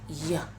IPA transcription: j